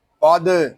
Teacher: قاف دال زبر قد، قاف یہ حروف مستعلیہ میں سے ہے، اس کو پر پڑھیں گے. دال ساکن ہے اور اس میں کلکلا خوب ظاہر کریں گے کیونکہ دال حروف کلکلا میں سے ہے، اور جب حروف کلکلا ساکن ہوں تو ان میں کلکلا خوب ظاہر ہوگا.